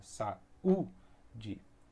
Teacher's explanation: Quando se fala saúde, o U ele é enfático, ele tem o som mais forte na palavra. Saúde. Se ele fosse ficar na mesma sílaba, teria que retirar o acento e ia ficar saúde. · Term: vogal forte